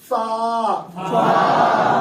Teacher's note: اب فا کے لیے دانت نیچے لگیں گے ہونٹوں کی تلی پر